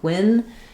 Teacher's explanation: If you say get, pen, penguin, uh it should just happen naturally if you're using more of an ng sound, especially, but even if you're just using the n sound, the word penguin is stressed on the first syllable. Second syllable gwin is shorter and unstressed. · The word penguin is stressed on the first syllable. Second syllable, gwyn, is shorter and unstressed.